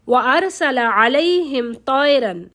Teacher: میم ساکن ہے اور اس کے بعد تا آ رہی ہے، لیکن کیا ہے؟ ہم غنہ نہیں کریں گے، اظہار کریں گے۔ اگر با ہوتی یا میم ہوتی تو ہم غنہ کرتے۔